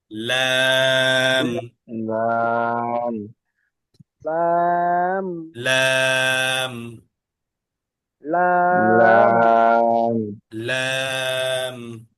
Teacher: লাম জিহ্বার আগার কিনারা সামনের উপরের দাঁতের মায়ের সঙ্গে লাগায়া জিহ্বার আগার একটা কিনারা জিহ্বার আগার একটা কিনারা উপরের দাঁতের মাইতে